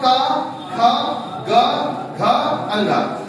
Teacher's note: आवाज हमारे स्वतंत्र रूप से गले से निकल रही है, कहीं ना ओठ टच कर रहा आपस में, नहीं जीभ कहीं संघर्ष कर रहा है, मतलब आवाज गले से निकल रही है। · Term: कंठ